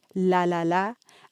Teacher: by l we mean clear apical a lateral approximant